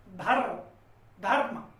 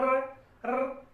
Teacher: तो इस वर्ण का उच्चारण करते समय जो हमारी जीभ का जीवा नोक है या जीभ का जो अग्रभाग है वो मूर्धा में स्पर्श होता है